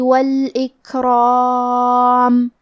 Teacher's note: حرف الراء پہ زبر ہے اور اس کے بعد مد الف ہے تو ہمیں یہ دونوں حرف کو تفخیم سے پڑھنا ہے